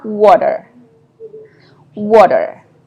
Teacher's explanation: American don't usually pronounce a t sound. Yeah. They pronouncing it as in between t and d. And this is what is called a flap.